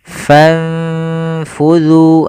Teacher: Kemudian pada lafal fanfudhu di sini ada lafal ikhfa, yaitu ada bacaan ikhfa, yaitu disamarkan nunnya ke huruf fa.